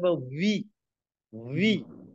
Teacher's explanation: এরপর পরবর্তীতে যে লেটার রয়েছে বি, আমরা সাধারণত বি বলতাম, বি বলবো না, এটা বলবো হলো ভি। ভি, দুই ঠোঁটের মাঝখান থেকে বাতাস বাইরে, বা ভি, ভি।